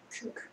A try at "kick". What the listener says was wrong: 오케이.